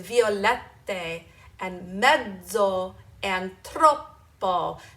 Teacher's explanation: Notice how I just linger on those double consonants just a little bit longer